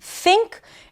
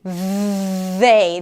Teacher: The only difference is the vibration of the vocal chords. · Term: voiceless TH